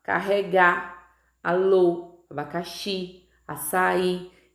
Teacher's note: todas as sílabas tônicas, ou seja, as sílabas que são pronunciadas mais forte, elas estão posicionadas na última sílaba. Por estar posicionada na última sílaba, esse grupo de palavras aí que eu acabei de ler, carregar, alô, abacaxi, açaí, são classificadas como oxítonas, tá?